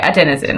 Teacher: want to stress on the second syllable